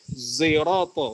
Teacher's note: ismam campuran antara sod dengan zai